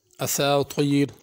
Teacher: اساطیر طا پر ہے، اساتیر تا کر کے نہیں پڑھنا۔ اساطیر را بھی پر ہوگی۔